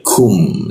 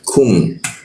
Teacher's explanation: Nah, huruf ku di siku tenggorokan. lidahnya diturunkan sehingga rongga udara terbuka dan ada hembusan udaranya kum, seperti itu, ada udaranya dia kum.